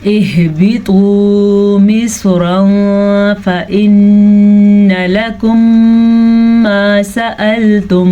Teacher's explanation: نون تنوین یا نون ساکن کی آواز کو ہم چھپا کے پڑھیں گے اور غنہ کے ساتھ پڑھیں گے. اس کو کہتے ہیں اخفا.